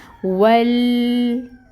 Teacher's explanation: یہاں پہ لام پہ قلقلہ نہیں ہونا چاہیے، لام کو ہلانا نہیں ہے، لام میں توسط آئے گا، آواز جاری رہے گی